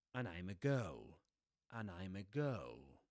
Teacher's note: with the schwa, you don't pronounce the d there